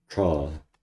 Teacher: It's very retroflex, so I like it.